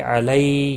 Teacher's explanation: یالین ہے، تھوڑا نرمی کے ساتھ کھینچ کر ادا کریں گے